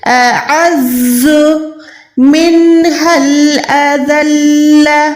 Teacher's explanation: نون ساکن کے بعد ہا ہے، یہاں پر اظہار کریں، نون کو چھپائیں نہیں